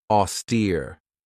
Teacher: Another great word is this one right here, austere. This has two syllables, and the stress is on that second syllable with that long E sound